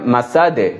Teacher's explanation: মাসাদে দাল আছে শেষে কল কলার হরফ এখানে ধাক্কা দিয়ে হবে